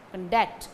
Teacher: the stress falls on the second syllable, duct, conduct.